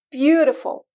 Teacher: مثلا beautiful أول مقطع صوتي رح ناخد وقت أكتر من المقاطع الصوتية الأخرى لنلفظه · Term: ستريس